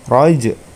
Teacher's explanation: huruf ja-nya ja sukun, itu termasuk hukum bacaan qalqalah, jadi dipantulkan